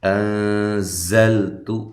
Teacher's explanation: انزلت حمزہ کو تحقیق کے ساتھ نون ساکنہ کا اخفا ہے مع الغنہ۔ زلت زا کو زور سے سختی کے ساتھ ادا کرنا ہے، سیٹی کے ساتھ ادا کرنا ہے، لام کو ہلانا نہیں ہے، تا کو باریک پڑھنا ہے اور لمبا بھی نہیں کرنا۔